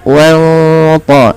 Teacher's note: nunnya disamarkan kepada huruf ta dan dia menebal karena sifat huruf ta tebal. Di situ ada sifat huruf ta yang itu berupa idbaq dan isti'la. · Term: ikhfa hakiki